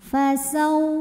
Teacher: Ada huruf lin karena ada waw sukun yang didahului baris fathah. Maka cara bacanya cukup kita lembutkan atau kita lunakkan. Fasau, jadi tidak perlu dipanjangkan.